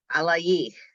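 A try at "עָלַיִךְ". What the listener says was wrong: Alayich. She put the accent on the yich. Where's the accent?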